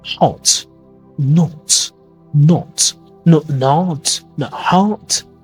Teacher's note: Like British English, it's more vertical in the mouth.